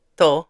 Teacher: he shortens the todo and it just sounds like to